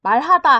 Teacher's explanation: 이때 말하다 할 때 말은 길게 소리를 내요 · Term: 소리의 길이